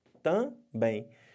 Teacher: Ficou uma sílaba com som de duas vogais. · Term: Ditongo